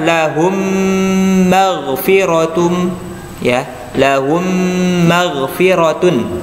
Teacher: Kalau ini ada gunnahnya. Lahum ditahan dulu karena mim termasuk dari huruf gunnah.